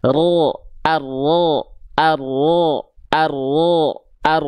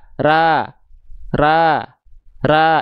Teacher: bobot tebalnya itu karena pangkal lidahnya naik